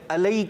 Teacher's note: आइन की बजाय हमज़ा पढ़ते हैं, अलैका पढ़ते हैं।